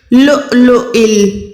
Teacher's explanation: کَأَمْثَالِ اللُّؤْلُؤِ، اب یہاں پر حمزہ جو ہے اس کو ہم نے واو کے اوپر والے حمزہ کو پڑھنا ہے، نہ کہ واو کو